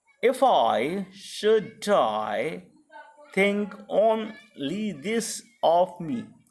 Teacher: So it is written into formal metrical verse, or we can say that number of syllable is just to be taken into account, and so it is a typical sonnet, but your meter form is named as iambic pentameter, that the line has been divided into 5 feet with an unstressed stress level pattern